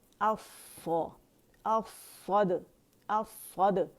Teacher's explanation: اور دال پہ قلقلہ کریں گے